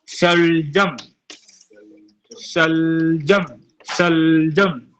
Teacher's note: जब हम बोलेंगे शलजम, शलजम, शलजम, तो जीभ जो है दांत के ऊपर जा रहा है